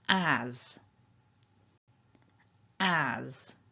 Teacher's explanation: So it's always good to start by thinking about the strong form, and as you can see here we've got that nice a sound, and then the s is actually pronounced in a voiced manner as a z